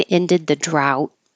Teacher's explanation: drought and that will sound like drown because you won't hear the D